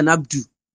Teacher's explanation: without pronouncing the Dhamma on the Ba